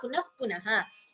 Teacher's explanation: So visarga followed by pa upadmaniya